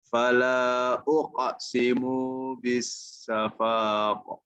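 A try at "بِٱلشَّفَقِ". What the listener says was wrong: Syafaq dia tidak boleh dipanjangkan seperti itu, namun dia harus diwakafkan terus. Bisyafaq. Bisyafaq. Karena tidak ada fathah di sini. Ya, kalau ada fathah baru dia syafaqo. Kalau ini enggak, syafaqo langsung.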